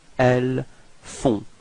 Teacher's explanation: so you get this nasal on, on. Okay, and then the final T is not pronounced.